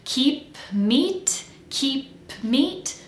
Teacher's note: I have to release the air to make the P of keep and then jump quickly back into M for meat keep meat